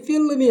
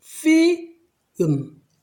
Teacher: 그래서 우리가 흔히 아는 단어 중에 이 단어가 있는데, 필름이라고 하면 안 됩니다. 왜냐하면 이 L이 뒤에 M이라는 자음이 있기 때문에 그 자음으로 작동하지 못하고 반모음, 즉 으라고 발음을 해야 됩니다. 그래서 전체적인 발음이 필름이 아니고 피음, 빨리 하면 film, film 이렇게 들립니다.